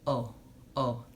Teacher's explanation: in Spanish we say oh oh just the vowel o it stops on the vowel and generally it's fairly short